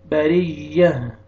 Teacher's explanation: जब वक्फ करेंगे तो ता को हा में चेंज करना है, हा का साउंड आएगा, यह या ज़बर हा जज़म हो जाएगा।